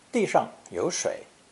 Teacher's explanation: Note that 上 is usually unstressed after a word indicating location.